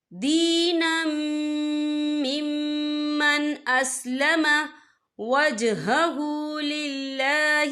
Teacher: تو یہاں پر ادغام ہوگا، تو ہم اسے غننے کے ساتھ پڑھیں گے